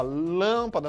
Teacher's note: Eu falo com o som fechado, né? Ó, lâmpada, não falo lâmpada, meu amigo.